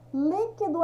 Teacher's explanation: Líquido é na antepenúltima